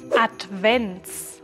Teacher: la ts es un sonido fuerte coloca tu lengua detrás de tus dientes superiores y bota fuertemente el aire